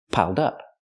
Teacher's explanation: We have the d sound for the ed. Link the sounds. Piled up. Pronounce it like one word.